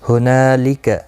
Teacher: ہنا الف مدہ ہے، ایک الف کی مقدار کے برابر کھینچ کر پڑھیں گے، لکا کو کھینچنا نہیں.